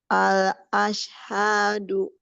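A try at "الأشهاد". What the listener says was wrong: Nah, du-nya jangan pakai hamzah. Hadu. Du. Iya.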